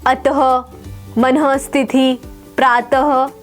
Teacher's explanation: इसका उच्चारण ह ध्वनि के समान होता है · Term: विसर्ग